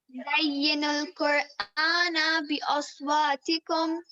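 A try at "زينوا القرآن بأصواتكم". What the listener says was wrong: جی نا کو لمبا نہیں کرنا. زین القرآن بأصواتکم.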